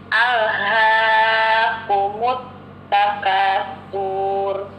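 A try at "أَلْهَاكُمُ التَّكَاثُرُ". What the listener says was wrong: Nah, Ibu, kenapa surnya dipanjangin? Harusnya pendek ya. Alhaakumut takatsur gitu.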